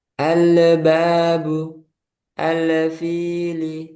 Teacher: kesalahan yang terakhir yang sering Anda temuin yaitu lamnya dibaca mantul. Nah, itu juga enggak boleh.